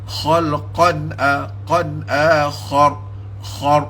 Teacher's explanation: tebalkan kha dengan ra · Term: ra tebal